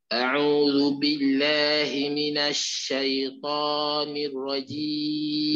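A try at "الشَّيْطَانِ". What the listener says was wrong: Jangan muncung. Syaitani. Buka mulut je lah.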